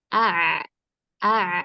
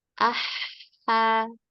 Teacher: Kalau huruf ain dia lebih lebih sempit tenggorokannya ketika diucapkan karena lebih banyak mundurnya katup epiglotis tersebut atau katup tenggorokan.